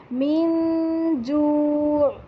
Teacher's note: एक ऐसा गुन्ना करना है जिसमें आपने ज़बान तालू से टच नहीं करनी, लेकिन आवाज़ जो है वो आपकी नाक से गुजरेगी।